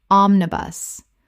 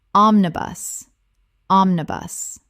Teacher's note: 3 syllables with the stress on the first, same as the bus.